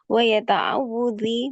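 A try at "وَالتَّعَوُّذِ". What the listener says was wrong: Ta'awudzi, gak ada ya-nya. Ta'awudzi, gak ada ya-nya.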